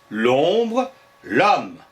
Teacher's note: la présence de hache muet n'influence pas la prononciation le mot se dit comme si c'était une voyelle